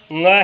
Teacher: नाक से बोलने वाले पंचम वर्ण है, वर्ग के पंचम वर्ण यानी पांचवा वर्ण